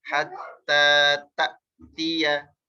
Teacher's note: Jadi kayak kepentok suaranya, kayak tak dan berhenti suara, berhenti udara karena hamzah punya sifat syiddah.